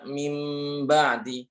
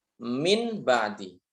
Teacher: tidak membaca iqlab harusnya membaca mim ba'di, tapi membaca min ba'di.